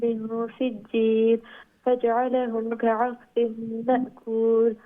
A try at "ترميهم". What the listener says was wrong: The bottom line, tarmihim, that me, are we going to stretch the me? Okay, due to what? Yeah, which is ya madda, right? And that will prolong the sound of the haraka, the kasra beneath the mim. So ta'mihim, make sure you stretch it to a bit more than what you did. Okay, so tarmihim bihijaratin min sijil.